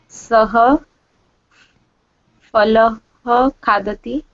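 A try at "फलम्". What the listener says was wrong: Pha. There is no fa. Okay. In Hindi, when we put pha, we read it as fa. But in Sanskrit, there is no fa.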